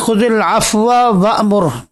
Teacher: یہاں واو کا واو میں ادغام ہو رہا ہے، تو پہلے واو کو اوپر آپ جو ہے وہ اختلاس بھی کر سکتے ہیں، ادغام تو ہے ہی، اختلاس بھی جائز ہے، دوسری وجہ۔